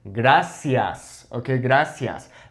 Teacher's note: in Mexico, we would say something like gracias, okay, gracias. That C has the S sound.